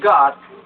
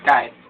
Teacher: the sound is produced with the back of the tongue raised against or touching the soft palate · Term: linguovelar